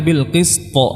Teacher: dua huruf ini th dan qf dia tebal maka kita juga menebalkan qalqalahnya